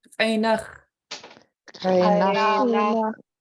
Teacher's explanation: nach, Nach. And since these are both high tone A and nach, your voice is kind of gonna sound cheerful, kind of bouncing up